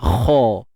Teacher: Kat sini isti'la. Angkat pangkal lidah kita.